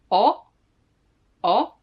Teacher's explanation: you just close your lips not the whole mouth but just the lips and the tongue is a bit at the back